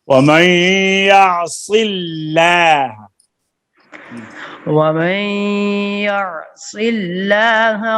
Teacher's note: اللہ کے لام سے پہلے کسرہ آ گیا ہے تو یہ اللہ کا لام جو ہے پر نہیں ہوگا